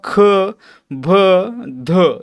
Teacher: ख भ ध यांच्यामध्ये ह चा उच्चार आहे आणि हवा बाहेर सोडली जाते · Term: महाप्राण